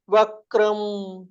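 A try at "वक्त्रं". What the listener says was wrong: அது வக்ரம் சொல்லு, வக்திரம், இக்கு இத்து ர மூணு இருக்கு. தீப்த ஹுதாஷ வக்திரம், அது கொஞ்சம்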